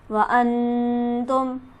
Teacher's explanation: अंतुम के नून पर हम गुन्ना करेंगे, नून साकिन है और इसके बाद हरफ हल्की भी मौजूद नहीं।